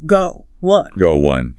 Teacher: Or a really common phrasal verb like go on. That might naturally acquire a little W sound bridging the two vowels.